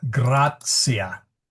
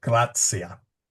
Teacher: Ecclesiastical Latin doesn't make it that soft. It's a TS, so it'd be a tentacion.